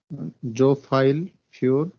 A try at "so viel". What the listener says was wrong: So viel, not file.